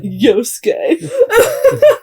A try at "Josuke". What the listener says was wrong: And Josuke's not Swedish, so it's not Yosuke. Yeah, you've trained yourself to